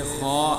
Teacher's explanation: خا کا مخرج ابتدائے حلق، یعنی حلق کے شروع حصے سے خا ادا ہوتا ہے۔